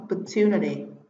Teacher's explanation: trọng âm rơi vào tiết thứ ba